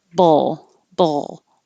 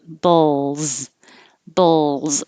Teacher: i don't want you to think of making a u um put your tongue in the l position and before you even open your lips for the b it's there bowl bowl and then you make a z bowls bowls so